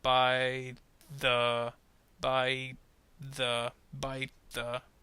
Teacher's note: the t at the end of bite and the voice th in the beginning of the are actually going to kind of blend together and make it kind of sound like one idea. · don't actually finish the t sound. You're actually going to have it connect to the beginning of the th sound. So listen to it very slowly. · So notice how I finish on the T, bite, but I don't stop it. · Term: blending